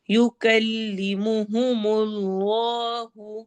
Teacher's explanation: اس میں جلالہ کو ہیوی پڑھنا ہے